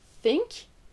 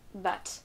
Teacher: C'est un son où votre langue va être au niveau de vos dents et elle va sortir légèrement de votre bouche.